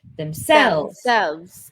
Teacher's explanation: we would say the word stress is on the second syllable.